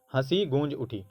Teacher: ह में और ग में आवाज़ है, वो नाक और मुंह दोनों से निकल रहा है, इसीलिए यहाँ पर चंद्रबिंदु का इस्तेमाल किया गया है।